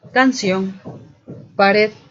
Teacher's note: la ubicación del acento en esta clasificación se encuentra en la última sílaba la regla nos dice que deben tildarse cuando termina en n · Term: agudas